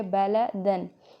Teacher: बलदन के लास्ट पे 2 ज़बर हैं, लेकिन साउंड क्या आ रही है? नून साकिन की आवाज़ आ रही है,